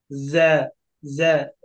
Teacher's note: একেবারে শক্ত না, নরম হবে। এবং জিহ্বার আগা সামনের নিচের দুই দাঁতের পিঠের সঙ্গে লেগে উচ্চারণ হবে। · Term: জায়ের যে মাখরাজ